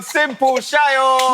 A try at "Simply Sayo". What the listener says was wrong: No, it's not simple. Simply Sayo.